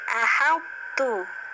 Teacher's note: jangan sampai menebalkan huruf ha ya, bukan ha besar tapi ha kecil.